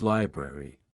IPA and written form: ˈlaɪ.brer.i (Library)